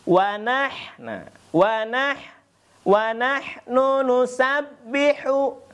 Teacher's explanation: di sana ada huruf ba-nya di tasydid. Jadi kita harus dimatikan dulu, kemudian kita hidupkan lagi.